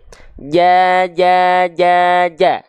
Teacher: jadi tepat dari bagian tengah lidah kita disentuhkan ke langit-langit atas kita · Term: huruf Jim